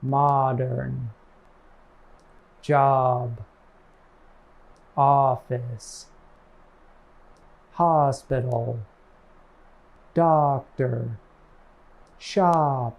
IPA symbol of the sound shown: ɑ